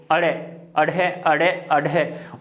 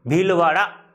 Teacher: जैसे बोल के देखो, अड़े अड़े अड़े अड़े, ऊपर जाएगी जीभ और तुरंत झटके से नीचे गिरेगी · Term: उत्क्षिप्त वर्ण